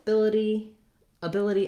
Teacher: both ability ability and stability have second syllable stress